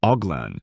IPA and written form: ɔɡ.lɛ̃ (Hoglin)